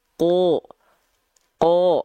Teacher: ka Kenapa karena huruf q huruf Shad itu huruf yang tebal huruf yang dibaca tebal ketika fathah itu dibaca dengan vokal O